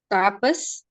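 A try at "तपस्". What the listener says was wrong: No, don't read Halant. Don't read Halant. Tapasa.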